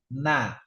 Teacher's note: Mau ngucapin na ini ujung lidah yang nempel ke atas.